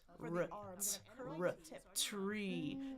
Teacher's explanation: But I'm going to pull my tongue back for the R. I'm going to curl the tip.